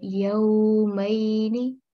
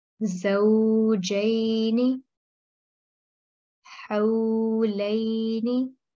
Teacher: So the lean means ease and softness. And if a maftu letter, i.e. a fatha letter, appears before waw sakin or ya sakin, its sound will softly make a half circle for 2 seconds or 2 counts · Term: waw lean